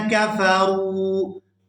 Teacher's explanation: ان الذین، یہاں نون مشدد پر غنہ کریں گے اور آگے ذال کو یا ساکن کے ساتھ ملائیں گے تو اس کو کھینچ کر ادا کریں گے، ان الذین کفروا، یہاں را کو واو ساکن کے ساتھ ملائیں گے تو کھینچ کر ادا کریں گے کیونکہ یہ واو مدہ ہے